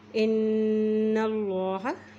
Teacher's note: नून के बाद शद है इसलिए यहाँ पे गुन्ना करेंगे